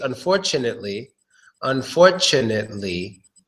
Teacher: Yes, we make a CH sound. So pretend that T is a CH.